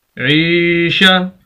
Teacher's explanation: یا مدہ لمبا کریں گے عین کو ، شین زبر شا، عیشہ، تا 2 زیر را تر، عیشہ